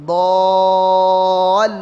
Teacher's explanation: Ini panjangnya 6 harokat, mad lazim mutsaqqal kalimi atau kalimi mutsaqqal ya, panjang 6 harokat.